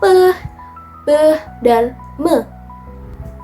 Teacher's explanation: bilabial, yaitu kedua bibir menyatu